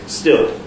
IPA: stɪɫ